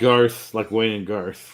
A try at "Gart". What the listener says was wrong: No, it's one letter short. Gart.